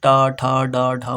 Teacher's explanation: इसमें जो जीव होती है हमारी जीवा, वो उल्टी होके हमारे तालु में स्पर्श करती है। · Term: मूर्धन्य व्यंजन